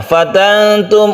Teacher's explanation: Fatantum untuk ikhfa hakiki nun bertemu dengan ta, ini kita dengungkan.